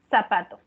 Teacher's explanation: Le quitamos el sonido de la Z y le colocamos el sonido de la S. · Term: ceseo